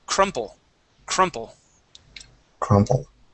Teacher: The stress is going to be right up right at the very beginning of the word.